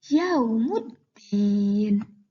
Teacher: suara lamnya hilang berganti dengan suara huruf syamsiah. Yaumuddin tidak dibaca yaumuddin, tetapi yaumuddin. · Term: idgham syamsiah